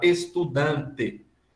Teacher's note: o dan tem 3 letras, mas somente 2 fonemas, porque o N foi assimilado pela vogal. E quando a gente vai contar esse tipo de sílaba, a gente vai dizer que ela é uma sílaba que tenha uma consoante, dan, e uma vogal.